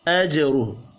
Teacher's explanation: ہا کے اوپر چھوٹی مد ہے، تین الف کے برابر کھینچ کر پڑھنا ہے · را کو پیش کی وجہ سے پر پڑھنا ہے